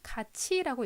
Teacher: 마지막으로 이것은 같이라고 읽어야 하는데 실제로는 같이라고 읽히죠. 티읕이 치읒으로 바뀌었습니다